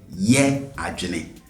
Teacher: The tone on that ye was on the high side.